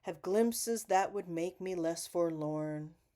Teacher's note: there's 10 syllables per line and there's an alternating unstressed stressed syllable pattern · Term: iambic pentameter